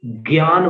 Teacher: हिंदी में ज्ञान बोलते हैं, ग और य।